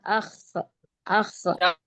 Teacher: تھوڑا سا موٹا اور کھینچ کے پڑھیں گے، اور اس کا مخرج ہے حلق کا اوپری حصہ۔ حلق کا اوپری حصہ یعنی جہاں سے ہماری زبان شروع ہوگی وہ ہے حلق کا اوپری حصہ۔